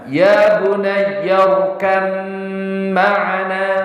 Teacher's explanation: Ba itu memiliki sifat qalqalah, mim itu tidak memiliki sifat qalqalah. Maka cara bacanya ya bunayyarkam ma'ana, tidak dibaca ya bunayyarkab ma'ana.